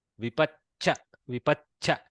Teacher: No Mahaprana. Don't introduce more air. Just double pronounce the Chakara a little bit. Like attack Cha, release Cha. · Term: double cha